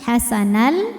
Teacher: ini adalah idgham bila ghunah karena tanwin fathah menghadapi huruf lam maka tanwin kita masukkan ke lam hasanal tanpa kita dengungkan · Maka tanwin kita masukkan ke lam hasanal tanpa kita dengungkan. Jadi jangan ditahan. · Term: idgham bila gunnah